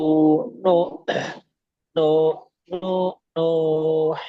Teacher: ketika panjangnya diusahakan jangan masuk hidung